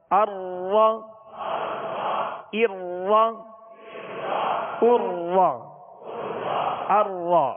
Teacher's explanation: را کو اس کے مخرج سے ادا کریں گے تو را میں کپ کپاہٹ سی ہوگی، کپ کپی پیدا ہوگی، جسے کہتے ہیں تکرار. یہ مشابہت تکرار ہے اس میں، اور مشابہت تکرار کے بغیر ادا کریں گے تو را وا پڑھا جائے گا.